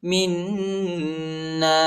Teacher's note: میم کو نون کے ساتھ ملائیں گے اور غنہ کریں گے